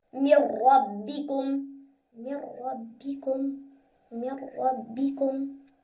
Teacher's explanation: Now let's take some examples with ra in the rule of merge. So, over here there is ra after noon sakin. So we must not make ghunna.